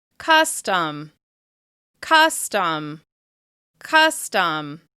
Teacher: As you can hear, the first syllable stands out more because it's being stressed.